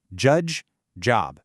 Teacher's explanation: the j sound is a quick d sound followed by that buzzy zh sound. D, z, j. Judge, job.